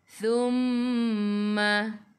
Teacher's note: hujung lidah keluar pada gigi depan